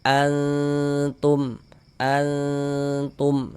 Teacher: Kemudian cara membaca ikhfa itu dibaca samar. Jadi bunyi nun sukun atau bunyi tanwinnya itu kita samarkan. Ah, dengan kita bersiap-siap masuk ke dalam huruf ikhfanya seperti itu.